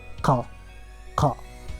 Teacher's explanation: The letter Qa is uvular sound. It means that comes from the uvula, which is the fleshy soft part that is found at the back of your mouth roof.